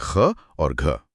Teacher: महाप्राण अक्षरों में एक ह जैसी ध्वनि मिली होती है, जो हवा के उसी झोंके से आती है।